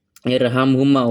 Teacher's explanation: Huruf wacaan ro pada bacaan zampi merupakan huruf bacaan ro tafhim. Ee ro sukun sebelumnya hamzah wasal. Jadi baca tebal